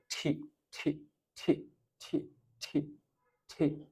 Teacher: মহাপ্রাণ মানে ফুসফুস তাড়িত বাতাস একটু বেশি বের হয় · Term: অ্যাসপিরেশন